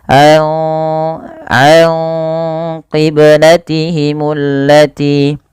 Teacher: dengan menyamarkan suara nunnya kepada huruf qaf. Karena huruf qaf agak jauh ya daripada makhraj huruf nun. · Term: ikhfa hakiki